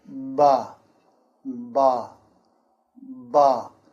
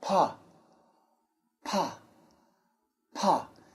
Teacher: with the B, there should be some vibration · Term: voicing